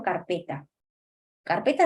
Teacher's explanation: Acá está terminando en vocal no lleva fuerza de voz ahí es una palabra grave